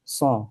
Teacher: shad itu tebal sehingga suaranya menjadi sha